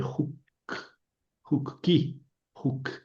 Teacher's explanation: el sonido o se abrevió en u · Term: U breve